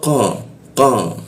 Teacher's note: Fa masuk ke qa. Nah, qa itu di siku tenggorokan, lidah dinaikkan sehingga membaca qa itu tidak ada hembusan udara.